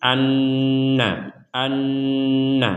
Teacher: maka kita dengungkan 100% di rongga hidung kita selama dua harakat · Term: Nun bertasydid